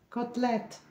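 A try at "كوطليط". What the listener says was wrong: Non, pas t. Ta. Côtelette. Comme athlète. Tu dis pas athlète. Tu dis athlète. Côtelette.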